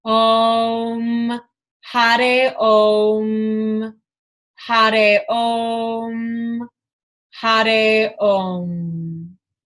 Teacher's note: The R sound in Sanskrit is like a kind of tap flap with your tongue up to the roof of your mouth.